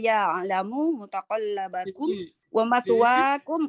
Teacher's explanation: Ya alamu itu ainnya mengalir, dibaca mengalir.